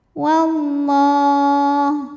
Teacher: Alif lamnya dinamakan dengan alif lam syamsiyah karena alif lam menghadapi huruf syamsiyah yaitu lam, maka alif lam tidak dibaca.